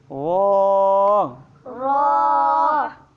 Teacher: रा को जो है फुर और मोटा पढ़ा जाता है